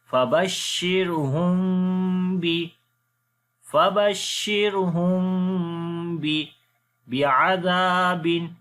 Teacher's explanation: We make ikhfai shafawi here, the hiding sound of mim. And also we read the mim sound by joining our lips with soft sound. We say Fabashshirhum bi'adhabin. · Zal we read in soft sound and also we long due to alif madda.